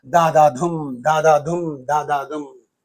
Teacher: Anapeste means da da dum. Two unstressed followed by one stressed syllable. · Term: anapestic meter